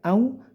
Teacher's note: tapi au pakai u singkat meliuk saja